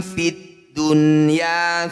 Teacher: di satu kata disebut bacaan e izhar wajib atau izhar mutlak bunyi nun sukun dibaca jelas tidak usah dengung